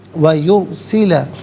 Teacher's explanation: را ساکن ما قبل یا پر پیش، را ساکن کو پر کر کے پڑھا جائے گا